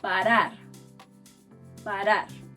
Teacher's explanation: This letter is somewhat hard because it has two sounds. The first sound resembles the R in butter. It's called a flap,